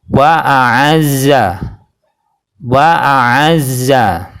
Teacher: Yang benar adalah yang pertama adalah hamzah a, yang kedua adalah ain a.